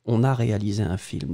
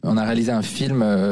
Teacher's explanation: it goes for the on a, so connection between on and a, which is totally normal.